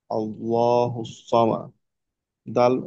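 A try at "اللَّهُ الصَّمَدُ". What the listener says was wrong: সদ হলো মোটা হরফ, এই জন্য সদটাকে আর একটু মোটা করে বলতে হবে। আর এখানে হুস, যেহেতু এখানে লাম এই ইয়া আছে, তাসদিদ আছে, তাসদিদ যুক্ত হরফকে মোটামুটি দুবার উচ্চারণ করতে হয়। একবার আগের হরফের সঙ্গে, পরের বার নিজের হরফের সঙ্গে।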